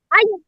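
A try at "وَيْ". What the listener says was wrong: আই কেন? ওয়াও জবর কি আ নাকি ওয়া? নাহিন বলো তো, ওয়াও জবর কি? ওয়া নাকি আ? ওয়া। হ্যাঁ, যদি বা জবর বা হয় এবং বা ইয়া জবর বাই হয়, তাহলে ওয়াও জবর ওয়া আর ওয়া ইয়া জবর কি হবে? ওয়াই, ওয়াই। ওয়াও ইয়া জবর ওয়াই,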